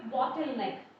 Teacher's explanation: It means here both are nouns here, bottle and neck. The stress falls on the first part of the word, that is bottle.